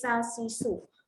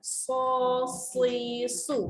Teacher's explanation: Okey, beza sin dengan sot. Sin ini nipis. Sa, si, su. Sod ni kena tebalkan.